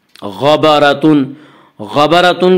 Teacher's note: غبرتن کی را کو پر پڑھیں گے،